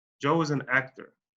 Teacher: Al final de esa oración, donde dice actor, el tono de mi voz se va para abajo.